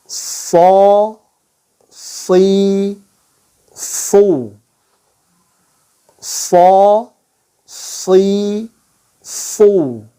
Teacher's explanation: Titik keluarnya sama dengan huruf sin, di antara gigi atas dan bawah, ya, lebih ke arah bawah. Hanya karakteristiknya saja yang berbeda, ya. · Kemudian dia ar-rakhawah juga, lepas juga. Kemudian yang membedakan dengan sin, dia lidahnya naik, al-isti'la ya. Lidahnya terangkat, pangkal lidahnya terangkat ya. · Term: huruf shad